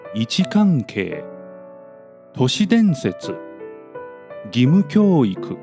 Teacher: Here, the last high mora of the whole word becomes the first mora of the latter element, which means the pitch of the former element doesn't drop even after its last mora. And that's why they become pattern A.